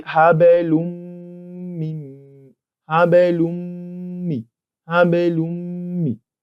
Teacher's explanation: we are going to be entering the tanween in this place into the mim with ghunnah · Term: idgham bi ghunnah